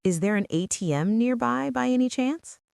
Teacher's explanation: That by any chance with a rising intonation is a lifesaver.